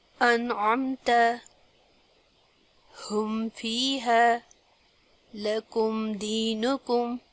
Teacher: میم ساکن کے بعد با اور میم کے علاوہ کوئی اور حرف آئے تو میم ساکن کو ظاہر کر کے بغیر غنہ کیے جلدی پڑھیں گے، اس کو اظہار کہتے ہیں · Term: میم ساکن کا اظہار